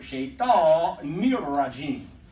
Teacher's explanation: I mean a shadda on the noon because it's not there. It's shaitan, and then the noon goes with the next word.